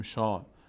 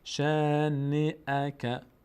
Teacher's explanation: این فتح، شین فتح داره، بعدش الف. ش الف صدای آ میگیره اما پر نمیشه. نمیگیم شا.